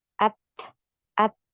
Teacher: huruf Ta ini punya aliran nafas ya at at jadi gitu tertahan suaranya dulu baru ngalir nafas